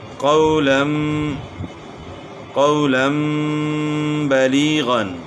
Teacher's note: من بقلها تنبت، انبا، قولا بلیغا، تو یہاں دو زبر کی تنوین کے بعد حرف با آ گئی، تو دو زبر کی آواز جس کے اندر دو زبر دو زیر دو پیش، یعنی تنوین میں نون کی جو آواز ہوتی ہے وہ نون کی بجائے میم کی آواز ہو جائے گی۔ قولم بلیغا، یعنی قولن کی بجائے قولم پڑھا جائے گا۔ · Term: اقلاب